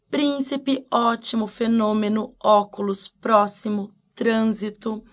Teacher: todas elas são acentuadas você viu uma palavra dividiu a sílaba percebeu que a antepenúltima é a mais forte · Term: proparoxítonas